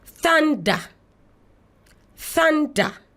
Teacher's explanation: The sound is voiceless because there is no vibration of our throat when you place your 2 fingers on it.